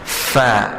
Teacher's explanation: Fa keluar daripada bibir mulut bawah, sentuh dengan gigi kacip atas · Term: huruf fa